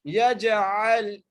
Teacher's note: جیم پر قلقلہ کرنا ہے، یا کو جیم سے ملانا ہے